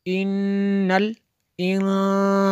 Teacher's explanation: یہاں پہ نون مشدد ہے، غنہ ہوگا